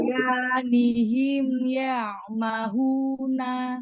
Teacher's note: sempurnakan lagi di huruf ghainnya itu roghwah, tapi ghainnya tebal.